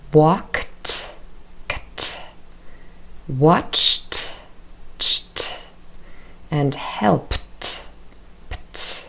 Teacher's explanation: where ed spelling is represented through t, our unvoiced consonant